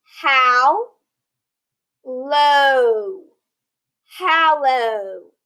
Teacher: if we have the ll followed by the vowel the vowel before those two l's will shorten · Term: short a sound